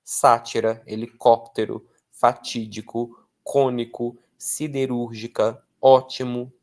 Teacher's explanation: tem força não na última, não penúltima, mas na antipenúltima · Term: propoxítonas